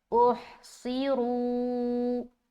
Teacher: تو جب بھی حروف مستعلیہ میں سے کوئی حرف آتا ہے تو اس کو آپ نے موٹا پڑھنا ہے ہر حال میں۔ تو یہاں پر صاد کے نیچے زیر ہے لیکن صاد موٹا ہی پڑھیں گے